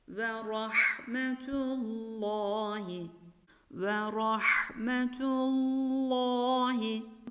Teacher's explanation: ra harfi kalın telaffuz edilir